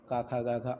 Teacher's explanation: क वर्ग और हा और विसर्ग इनका उच्चारण स्थान कंठ होगा ये कंठ द्वारा उच्चारित होंगे